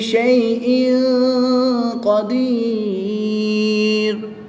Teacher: 2 زیر کی تنوین کے بعد قاف حرف اخفا میں سے ہے، یہاں پر اخفا ہوگا یعنی غنہ غمانی کر کے پڑھیں گے۔